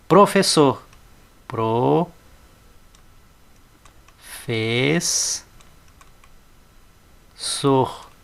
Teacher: terminou em R não tem acento a sílaba tônica é a última